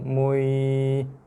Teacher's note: Bukan ditekan. Mu masuk dalam ya dengan sederhana je. Dengan lembut je. Dengan tekanan yang biasa je.